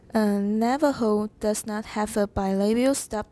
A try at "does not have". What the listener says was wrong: Does not have, not 是比较重, not treat it like a very important 实词. It looks like a 虚词, but it's very important because it changes the meaning exactly opposite to what it was.